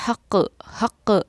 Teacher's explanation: اق کا یہ آواز کا لوٹنا، حق، اس کو ہی ہم قلقلہ کرنا کہتے ہیں